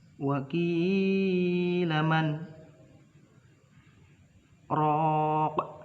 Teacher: huruf bacaan sakta yang berarti berhenti, dua ketukan tanpa mengambil nafas · nun mati bertemu dengan huruf ro. Itu adalah bacaan idgham bilahuna.